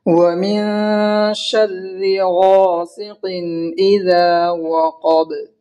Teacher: اور دال کو کھینچیں گے الف کے برابر، اس لیے کہ الف مدہ ہے. قاف کو موٹی آواز سے پڑھیں گے اور با میں قلقلہ ہوگا، کیونکہ حروف قلقلہ کے 5 حرف میں سے با آیا ہے اور ہم یہاں ساکن کر رہے ہیں.